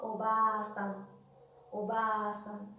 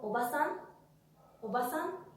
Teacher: Hay un sonido alargado de la A. Pero cuando yo digo oba-san, oba-san, no hay ningún tipo de alargamiento.